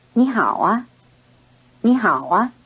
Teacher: The unstressed syllable a is added as a carrier of a rising tone which signals a question. You might consider the high-pitched syllable a as a spoken question mark. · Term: rising intonation